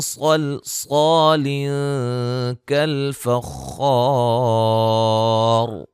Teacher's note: صاد اور صاد دونوں کو موٹا اور لام درمیان میں باریک کرنا ہے، ٹھیک ہے، یہ موٹی نہ ہونے پائے ساتھ، مد اصلی ہے، نون تنوین کا اخفا ہے، خا کو موٹا ادا کریں گے۔